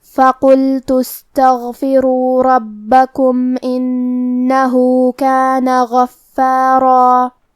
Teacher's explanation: کلمت فقلت میں حرف القاف ہے اور قاف کی ادائیگی زبان کے جڑ اور تالو کے نرم حصے سے ہے. قاف حروف التفخیم میں سے ہے تو ہم یہ حرف کو موٹی آواز میں پڑھیں گے